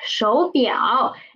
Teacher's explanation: the first third tone is changing to second tone, because when there are two third tone come together, we will change the first one into second tone. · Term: tone sending of two third tones